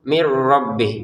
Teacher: dan di depannya ada ro, maka kita masukkan ya nun sukun ini ke ro-nya dengan tanpa dengung